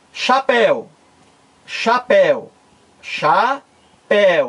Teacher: chapéu não é uma palavra para oxítona é uma palavra oxítona porque o acento tônico mais forte cai na última sílaba